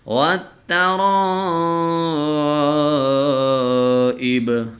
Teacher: را کے اوپر زبر ہے اور اس کے ساتھ الف ہے، الف کے اوپر مد ہے، تو ہم اس کو 4 حرکات کی مقدار ہم اس کو کھینچیں گے